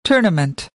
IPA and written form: ˈtɔː.nə.mənt (Tournament)